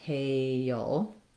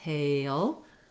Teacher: So it's extra long because I'm going to be doing the hey, and then before my dark L, I have a little bit of a schwa sound